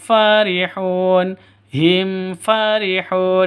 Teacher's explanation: Di sini ada mim mati bertemu dengan fa. Jelas terang karena idhar safawi. Idhar itu jelas terang, tidak boleh disentak, tidak boleh didengungkan, tidak boleh dipanjangkan.